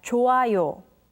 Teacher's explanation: When the character hyut meets with iung, the character hyut becomes silent, so it's pronounced as 좋아요.